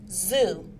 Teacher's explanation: is made using the alveolar Ridge and the tongue the tongue touches the roof of the mouth it is a fricative sound and is voiced the vocal cords vibrate